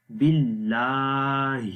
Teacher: بھی ایک الف کے برابر لمبا کرتے ہیں باللہ۔ آخر میں ہا کی آواز ہے جو کہ اگین گلے کے سب سے نیچے والے حصے سے پڑھی جائے گی ، جہاں سے حمزہ کو ہم نے پڑھا تھا باللہ، تو